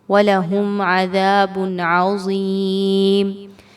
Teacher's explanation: وَلَهُمْ عَذَابٌ عَظِيمٌ، میم ساکن کے بعد عین ہے، اظہار شفوی کیا جائے گا، میم پر رکنا نہیں ہے۔ ذال کو نرمی کے ساتھ پڑھتے ہوئے 2 حرکات کے برابر لمبا کریں گے۔ با پر 2 پیش کی تنوین کے بعد عین ہے، یاد رکھیے تنوین کے بعد عین آ رہا ہے جو کہ حروف اظہار میں سے ہے۔ · یہاں پر کوئی کسی قسم کا غنہ نہیں کرنا، آواز کو تھوڑی دیر کے لیے روکنا نہیں ہے، بلکہ بہت واضح طور پر نون کی ادائیگی کو رکھنا ہے۔